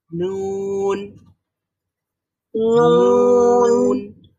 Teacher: নাকের মধ্যে এক ধরনের ভাইব্রেশন তৈরি হবে। নাক দিয়ে শব্দটা বের হবে, মুখ দিয়েও বের হবে। যখন আমরা এই জিহ্বা দিয়ে এটা আটকে ফেলবো, তখনই সাউন্ডটা মুখ দিয়ে বের না হয়ে নাক দিয়ে বের হবে।